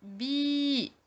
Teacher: Et le tout se prononce bi, 2 fois plus long qu'une voyelle brève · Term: voyelle longue